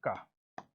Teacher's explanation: का उच्चारण स्थान होता है बेटा कंठ। ये कंठ है ना का।